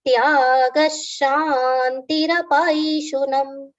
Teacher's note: long sha with aghat on it